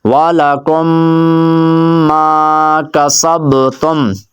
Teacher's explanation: میم کے بعد میم ہے تو میں نے غنہ کیا ہے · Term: ادغام شفوی